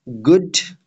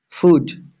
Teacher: Moreover, the vowels u, as in good, and food, also vary considerably as they have a very unrounded vowel in good and a rounded but central vowel in food